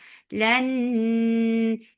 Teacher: idgham with gunna, so keep the sound in your nose for a longer time